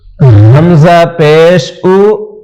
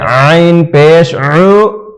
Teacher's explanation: حمزہ جو منہ سے ادا کریں گے عین گلے کے بیچ سے